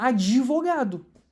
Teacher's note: Em vez dela pronunciar uma consoante muda, ela tá fazendo o suarab. Ela tá colocando uma vogal ali para pronunciar de uma maneira mais prática.